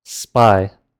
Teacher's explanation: in the word aspirated itself, the P there is not aspirated because it follows the letter S, which is itself unaspirated.